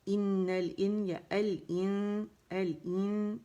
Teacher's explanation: پھر تو یہاں ہم نے کیا کرنا ہے, ایل آئے گا, یہاں پہ لام کا اظہار ہو گیا, اگر اسے الگ سے اٹھائیں گے ایل, ٹھیک ہے. لام جو ہے پڑھی جانے والی لام ہے, اور کیوں ہے, کیونکہ آگے اس کے قمری حرف آ رہا ہے, حمزہ آ رہی ہے, ٹھیک ہے.